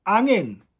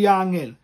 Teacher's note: it's best if you can drop the g and drop the h so hanging becomes angin